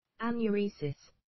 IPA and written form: ˌænjʊˈriːsɪs (anuresis)